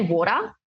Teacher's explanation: it's that R sound generally at the end of words that we don't say, and it almost has like a AH sound sometimes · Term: non-rhotic accent